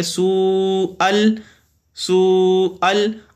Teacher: مدہ ہو رہا ہے اور مد متصل ہو رہی ہے، اور مد متصل کو اڑائی یا 2 الف کے برابر کھینچ کے لمبا کر کے پڑھتے ہیں